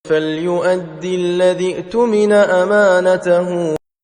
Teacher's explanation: دال مشدد کو الذی کے لام مشدد سے ملا کر ادا کریں اور ذال مکسور یعنی زیر والی کو اؤتمنہ کی حمزہ ساکنہ سے ملا کر جھٹکے سے پڑھیں، کیونکہ حمزہ ساکنہ ہمیشہ جھٹکے سے پڑھی جاتی ہے۔ یہاں بھی واو حمزہ کے لیے کرسی کا کام کر رہی ہے، چونکہ یہاں تسلسل سے تلاوت ہو رہی ہے اس لیے اؤتمنہ کی پہلی حمزہ جو کہ حمزۃ الوصل ہے گر جاتی ہے اور نہیں پڑھی جاتی۔ · دال مشدد ہونے کے باعث زور سے پڑھی جائے گی